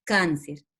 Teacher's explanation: cáncer está en la penúltima sílaba